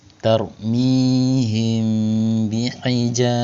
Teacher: Maka cara bacanya dibaca samar dan dengung. Mim sukunnya dibaca samar kemudian didengungkan kurang lebih 2 sampai dengan 3 harakat. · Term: ikfa syafawi